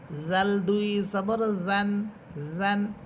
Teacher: জাল জাল জিহ্বার আগা সামনের উপরের দুই দাঁতের আগার সাথে লাগবে। জাল দুই জবর জান জান।